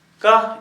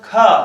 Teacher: थोड़ा अधिक मतलब वायु का संवेग हुआ, थोड़ा अधिक समय लगा उसको बोलने में, तो ये हो गया अल्प प्राण, ये हो गया महाप्राण।